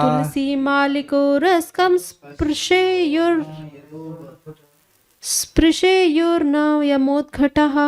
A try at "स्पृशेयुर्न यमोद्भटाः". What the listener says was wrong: घटा नहीं भटा, भटों को घटा कर दिया आपने। तुलसी माली को रस्कम, तुलसी माली को रस्कम स्पर्शेयुर्न यमोद्भटाः,